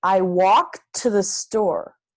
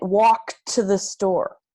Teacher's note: If you have a sentence like, I walked to the store, you might not hear the T.